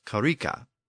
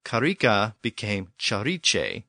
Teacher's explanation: the K sound had become a CH sound in Old English. So karika became chariche in Old English, and from that we eventually get the modern English word church.